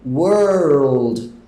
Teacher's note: Você acaba colocando um L ali no meio, que é o que a gente quer.